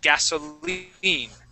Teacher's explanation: that I is going to sound like a long E sound.